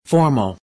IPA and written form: ˈfɔː.məl (Formal)